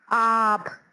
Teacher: اب اس میں ہم اگر مت لگا دیتے ہیں تو ان کے دیکھیے گا، الف مد آ پہ آپ، الف مد آ نون آن، الف مد آ گاب آگ، یعنی کہ ہم آ کو کھینچ کے ادا کر رہے ہیں